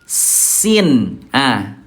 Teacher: Ujung lidah disentuhkan dengan ujung gigi seri bawah. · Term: huruf sin